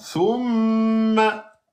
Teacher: Mim, shidda 2 temps.